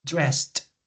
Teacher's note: Can you notice the explosive T?